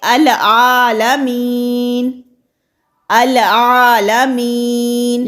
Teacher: हम यहाँ पर लालमीन नहीं पढ़ सकते, हमें अलिफ को इराब के साथ पढ़ना होगा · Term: हमज़ातुल वसल